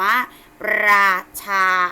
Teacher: รอเวลาเราออกเสียงเราจะต้องมีการกระดกลิ้นขึ้นไป